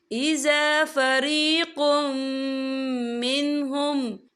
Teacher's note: یا دیکھیں اِذَا فَرِيقٌ، قوف کے پر تنوین ہے، تنوین کے بعد جو ہے میم آ رہا ہے، اور میم جو ہے حروف یرملون میں سے ہے، تو یہاں پر ادغام ہوگا، تو ہم اسے غنّے کے ساتھ پڑھیں گے